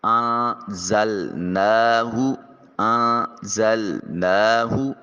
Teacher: جہاں نون ساکن یا نون تنوین کے بعد یہ 15 حروف آ جائیں وہاں نون کو اپنے مخرج میں چھپا کر ادا کریں گے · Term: اخفا